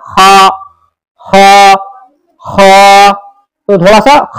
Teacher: हा के बाद है खा थोड़ा सा मोटा होगा, खा का मखरज है अदनाए हलक।